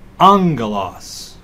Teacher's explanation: This usage is called the nasal gamma, so the leading gamma gets read as an N sound. So instead of agelos, it's angelos, from which we get our word angel.